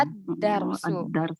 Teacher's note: lamnya tidak dibaca al-darsu, tetapi langsung masuk ke dal, Ke dal. ad-darsu. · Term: syamsiyah